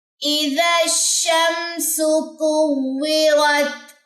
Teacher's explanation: تفشی کا مطلب کیا ہوتا ہے کہ آواز جو ہے پھیلے گی، جیسے اس طریقے سے آواز پھیلے گی. شمسو، اب بعض لوگ کیا کرتے ہیں، سو کو لمبا کر دیتے ہیں، سو کو لمبا نہیں کرنا. اذا الشمسو، سو غلط ہو جائے گا.